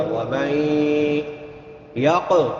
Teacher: ادغام مع الغنہ ہوگا۔ ومن یق، قاف موٹے حروف میں سے بھی ہے اور حروف قلقلہ میں سے بھی ہے، تو یہاں پہ قلقلہ کریں گے قاف پہ، یعنی اس کو ہلا کے پڑھیں گے